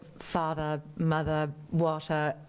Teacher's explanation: When you're doing a London dialect, the R's are at the ends of words. You don't really say the R.